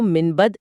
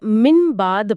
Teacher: نون کی آواز م یعنی میم کی آواز میں بدل جاتی ہے